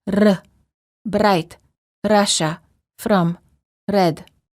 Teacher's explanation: R many languages have what is called a rolling R where the tip of the tongue touches the gum Ridge similar to the D sound but with a quick and repeated motion